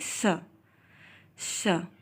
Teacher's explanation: और जीभ के पास हल्की सी ऊष्मा उत्पन्न होती है या इन व्यंजनों के उच्चारण में हवा जीभ और दांत के साथ घर्षण भी करती है इसलिए इन्हें संघर्षी या फिर उष्म संघर्षी व्यंजन भी कहते हैं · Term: उष्म व्यंजन